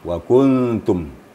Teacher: ta itu kan hukumnya kan ikhfa Hakiki jadi di samping kita menyembunyikan suara nun mati ke dalam ta juga ada di situ gunahnya